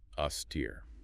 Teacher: Stress on the second syllable. Steer. 2 syllables.